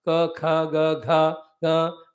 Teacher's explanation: Those who are pronounced with the base of the throat, they are called kantyaha